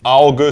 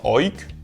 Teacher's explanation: La diphtongue au /aʊ̯/ en allemand équivaut au yiddish oy /ɔɪ̯/.